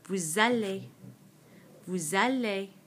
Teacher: this S, which is normally silent, normally it's pronounced vous, suddenly is going to become pronounced because of this vowel, this A in aller